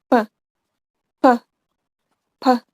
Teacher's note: P sound is stop voiceless on bilabial place.